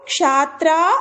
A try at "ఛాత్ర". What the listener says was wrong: షాత్ర కాదు ఛ చ కి మహాప్రాణం ఛ అండి ఛాత్ర